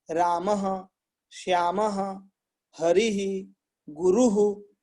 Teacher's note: गुरु शब्द में ऊ को बोल करके विसर्ग वहीं छोड़ दीजिए, बस ऊपर से छोड़ दीजिए, है ना, हल्का सा।